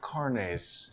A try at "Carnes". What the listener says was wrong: Spanish twist, but just Carnes. Thank you.